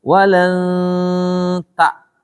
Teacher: Dekatkan engnya itu ke tak. Jangan walang tak. Kejauhan tuh. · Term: ikhfa